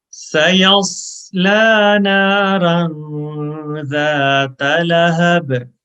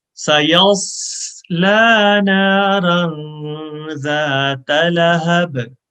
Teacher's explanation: साद में whistle sound है, सीटी की आवाज है.